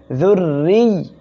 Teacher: র অক্ষর এর নিচে যখন এভাবে জের হবে র অক্ষরটি চিকন করে পড়তে হবে